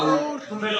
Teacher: ये भी कंठोष्ठीय ध्वनि है और जीभ के पक्ष भाग से बोला जाता है।